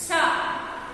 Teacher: a consonant sound that begins as a stop. It will stop and also it will fricate. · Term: affricate